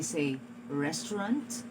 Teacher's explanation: I do not hear the sound of the distinct t in the final position, which is supposed to be still a distinct consonant sound. So it should have been produced as restaurant.